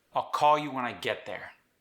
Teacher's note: I put stress on call and get